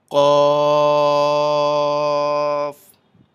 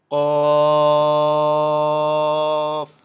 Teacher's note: 3 কফ। হরফটি জিহ্বার গোড়া তার বরাবর উপরের তালুতে লাগাইয়া শক্ত করে বলতে হয়